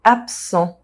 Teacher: The rule is that the second consonant modifies the first. So the S sound modifies the B sound and it becomes a P sound. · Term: assimulation